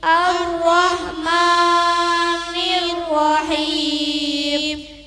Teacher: ha dikeluarkan dari tenggorokan yang tengah dengan angin yang halus bukan kasar.